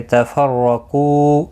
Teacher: رو زبر کی وجہ سے پر پڑھا جائے گا، قاف مستعلیہ ہے پر پڑھا جائے گا، کو واو مدہ ہے، ایک الف کی مقدار کے برابر کھینچ کر پڑھیں گے۔